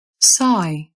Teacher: I as in sigh, which started all the way at the back of your mouth